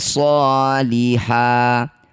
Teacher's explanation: Yang disebut bacaan mad iwad solihan, kita ganti fathah tanwinnya jadi fathah panjang. Panjangnya 2 harokat saja ya, jangan terlalu panjang.